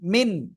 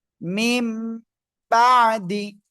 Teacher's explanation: নুন সাকিন বা তানভীনকে মিম দ্বারা পরিবর্তন করে পড়তে হবে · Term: ইকলাব